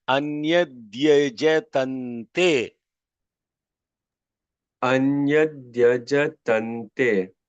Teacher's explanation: So therefore, because is yajatam te, because of the anuswara associated with the takara, it is pronounced as nakara. Therefore, it is anyadyajatante.